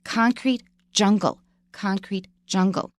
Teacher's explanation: we stress both of them